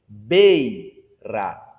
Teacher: Perceba que o I ele está acompanhando a vogal E. O I está apoiado na vogal E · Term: semivogal